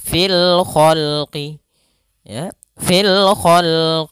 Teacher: alif lam yang ditulis dan dibaca sehingga suara lamnya terbaca dengan jelas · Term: alif lam Qariah, Alif lam qamariyah